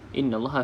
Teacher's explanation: Nun yang ada sabdu sama juga dengan mim yang bersabdu maka kita baca dengan ghunah ataupun dengung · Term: wajibul ghunnah